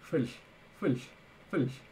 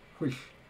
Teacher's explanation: Yeah, fulsh, because of the unrounded vowel. So that's phi, fulsh. And then the other one is whish, with the rounding.